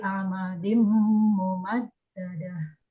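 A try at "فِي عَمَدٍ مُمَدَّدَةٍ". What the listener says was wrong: Bacaannya sudah bagus ya Bunda. Tadi huruf per hurufnya dibaca jelas, kemudian tajwidnya juga sudah cukup bagus.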